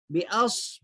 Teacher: صاد موٹا پڑھیں گے کیونکہ حروف مستعلیہ موٹے پڑھے جانے والے حروف میں سے 7 حروف پڑھے تھے ہم